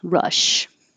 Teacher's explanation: Rush is so the tongue is low and pulled back.